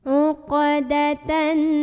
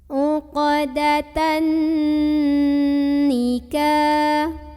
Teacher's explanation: Maka cara membunyikan huruf nunnya ini adalah didengungkan dulu. Tahan dulu kurang lebih 2 harokat sampai ada getaran halus ke hidung. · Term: gunnah musyaddadah